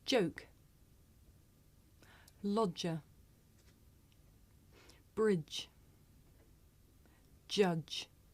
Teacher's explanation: this is a voiced consonant you can hear it at the beginning of the word joke in the middle of the word lodger at the end of the word bridge and at the beginning and end of the word judge did